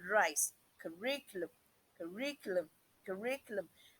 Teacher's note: You can perceive or hear the vibration. The tip of the tongue vibrates in the alveolar ridge.